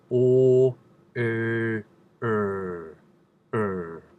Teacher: Sometimes it's not quite the you want, so I have them put in a tiny bit of a Midwestern American So er, er. Just a little smidge of Midwestern R.